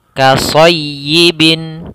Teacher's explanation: Maka di sini ketika tasydidnya dia, maka kita tekan dulu ya-nya baru dibaca kasrahnya